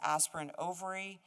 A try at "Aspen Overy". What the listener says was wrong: You always pronounce my name Aspirin Overy. It's Aspen Overy.